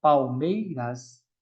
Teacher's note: Na palavra Palmeiras, esse L ele tem um som de U.